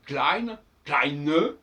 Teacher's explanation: Alors pour le féminin, on va lourdement marquer le E.